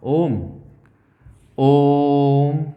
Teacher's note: खूब लंबा बोला आपने ओम खींच के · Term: प्लुत स्वर